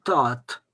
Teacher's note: Par exemple, pour écrire tat, tout le monde écrit un D à la fin, alors qu'on dit tat. Tat, on prononce un T final, mais on écrit tous un D.